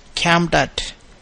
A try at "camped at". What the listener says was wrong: Yeah, camped at. Camped at.